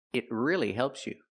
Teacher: Use a stop T. Not it, but it. Stop the air.